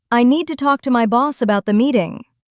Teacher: The stressed words are need, talk, boss, and meeting.